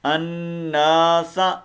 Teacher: سین کو لمبا نہیں کرنا، سا نہیں کر دینا. الناس بس.